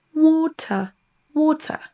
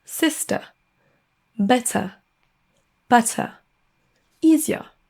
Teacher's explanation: On dira pas water en prononçant le R, mais water, on entend pas le R du tout dans l'accent britannique